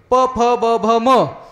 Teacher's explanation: प, फ, ब, भ, म हे उच्चार करत असताना ओठ ओठाला चिकटल्याशिवाय ह्याचा उच्चार होत नाही